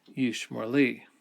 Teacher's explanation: the accent moves from the end of the word yishmor onto the word li. And so then we have a vowel reduction from holum to a kametz hatuf or kametz katon. · And so then we have a vowel reduction from holum to a kametz hatuf or kametz katon. It still has the O sound, but it's a short vowel rather than the long vowel.